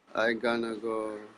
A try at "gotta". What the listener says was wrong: But make sure it doesn't sound like gonna. It's got to be gotta. Ga.